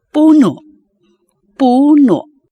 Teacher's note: the vowel at the end is pronounced with a glottal catch which beginners often mistake as the sound of k